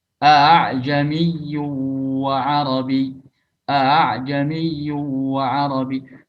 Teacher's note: Dalam membacanya secara riwayat kita dari guru ke guru itu dibaca dengan mentashil hamzah qata' yang kedua, sehingga bacanya a'jamiyyu wa arabi. Jadi hamzah yang kedua itu tidak jelas hamzahnya, jadi nggak sempurna antara hamzah dan alif.